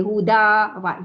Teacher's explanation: Dari segi bunyi dia huda, hilang bunyi tanwin. Itu sebab tu dia panggil mad iwad.